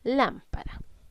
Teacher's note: En la palabra lámpara debemos identificar primero que todo dónde estoy cargando la voz. Y estoy cargando la voz en la sílaba lam. Al reconocer que lam es la sílaba donde estoy cargando la voz, puedo identificar que es una palabra esdrújula.